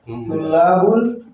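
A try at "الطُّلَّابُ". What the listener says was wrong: At-tullabu. Jangan tanwin. At-tullabu.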